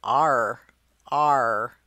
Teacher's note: This means that your mouth is going to have to move to produce these sounds - ar-ar-ar. We start as an /o/ and end up with a /r/.